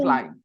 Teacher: No b sound. No b. B is silent.